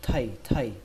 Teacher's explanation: Âm thay trong chữ thay ma, các bạn lấy chữ thay đó và các bạn đẩy hơi thêm một chút nữa